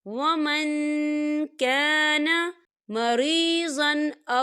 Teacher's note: دیکھیں ومن یہاں نون ساکن ہے اور نون ساکن کے بعد کاف آ رہا ہے، اور کاف جو ہے اقفا کا ورڈ ہے، تو ہم یہاں اقفا کریں گے، نون ساکن کی آواز کو ناک میں چھپائیں گے